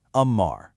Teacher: The mechanics for this one are wonderfully simple, with that wide, open ah sound. But you definitely want to note that the final r here gives us a really fascinating glimpse into regional diversity.